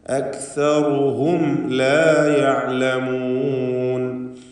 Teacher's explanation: ഷഫവി നൽകി മീമിനെ മണിക്കാതെ വെളിവാക്കുക. അക്സറുഹും, ഹും എന്ന് മണിച്ചു പോകരുത്. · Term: ഇൽഹാർ ഷഫവി